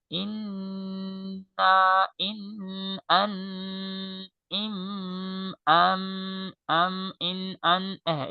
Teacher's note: এই গুণনা উচ্চারণ হয় নাকের বাস থেকে